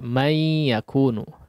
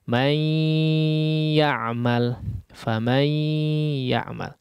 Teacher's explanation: Jadi nunnya hilang, ya. Itu namanya idgham, ya. Tapi juga disertai dengan gunnah yang panjang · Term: idgham bi gunnah